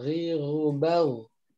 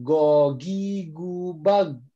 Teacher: huruf ghain itu ada di tenggorokan atas seperti itu ya. Makanya kalau huruf ghain itu kadang ada sedikit terdengar dengkur.